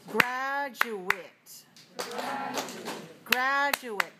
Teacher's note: Graduate has 3 syllables and it's stressed on the first syllable.